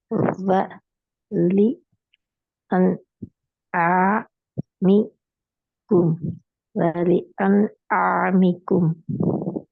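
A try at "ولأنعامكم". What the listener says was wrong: கொஞ்சம் நீட்டுங்க. ஒலி என் ஆமிக்கும். ஆமிக்கும். நீட்டுங்க நீட்டுங்க நீட்டுங்க நீட்டி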